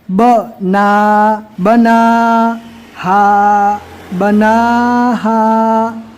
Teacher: نون کے اوپر کھڑا جبر آ گیا تو اس کو الف مدہ کی طرح ہی پڑھنا ہے، ایک الف کے برابر کھینچ کر، اور وائس بھی دونوں کی سیم رہے گی۔